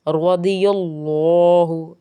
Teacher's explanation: ضاد پر زبر کی وجہ سے مستعلیہ ہے اس لیے پر